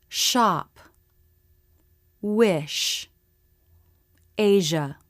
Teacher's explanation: the corners of the lips come in and the lips flare the tongue lifts so the front middle part of the tongue is very close to the roof of the mouth but not touching it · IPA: ʃ